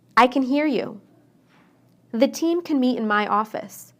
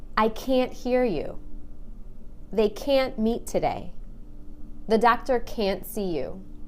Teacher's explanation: when I say can't, I stress that A and make it really long. I can't hear you. · When I say can inside a sentence, I shorten the A. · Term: the long A